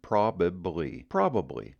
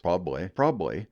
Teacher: you're going to hear that reduce down to two syllables